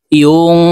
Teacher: নুন সাকিনের পরে ইকফার হরফ কফ আসছে, তো এই নুনকে নাকের ভিতরে লুকাইয়া গুন্নার সহিত পড়ব। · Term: ইকফা গুন্না